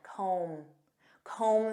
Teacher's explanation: And notice that B is silent.